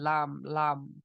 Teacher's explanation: तो जबान का किनारा जाहिक तक और ऊपर के दाढ़ों के मसड़े, ऊपर के जो दाढ़ है उसके मसोड़े, तो वहां से, दाढ़ से नहीं, दाढ़ के मसोड़ों से लाम, लाम निकलता है